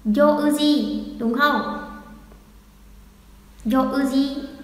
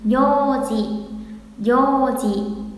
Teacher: Kéo dài ra thôi. Vì sau ô là ư là trường âm rồi.